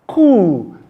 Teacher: It is pronounced coup because the p sound is silent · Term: silent p